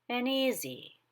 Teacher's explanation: The second syllable in easy is unstressed, so the pitch is lower. · I take the N up higher, but at the very top is the E in easy. So the E in easy has a higher pitch than the N, which is coming up.